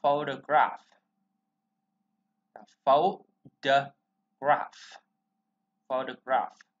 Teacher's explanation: Chữ O nè, đó. Chữ O này nó không được nhấn ha, nó chuyển về ơ